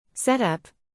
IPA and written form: sɛt ʌp (Set up)